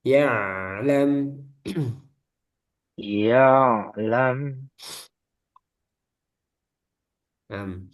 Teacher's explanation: Nam ee ain dikasih aliran sedikit seperti mim sukun lam lam ya lam ya ain sama ya ya jangan macet ya seperti hamzah ain dia ada aliran sedikit yaitu bainiah